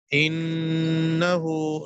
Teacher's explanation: نون میں غنہ ہے ناک کے پاس لے جائیں گے